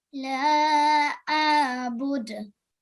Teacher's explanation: So we have to make sure ayn is pronounced from our throat.